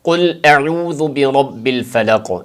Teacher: اس کے اندر جو پہلا اس کا لفظ ہے قل، اس کا جو قوف ہے، قوف کو پر پڑھیں، کل باریک کاف کی طرح نہ پڑھیں